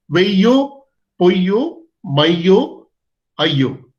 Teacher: ஆக வெய்யோ பொய்யோ மையோ ஐயோ. இங்கே மையோ என்பதை அதாவது ஒரு 1.5 மாத்திரை அளவு ஐகாரம் ஒலிக்கிறது என்று கருதி கொண்டால் மாத்திரை அளவிலும் அதே அளவோடு வருகிறது.